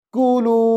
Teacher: काफ को लंबा नहीं करेंगे, लाम को लंबा करेंगे, कुलू। आगे देखें, वाव को शीन से मिलाएंगे, वश रबू, कैसे पढ़ेंगे?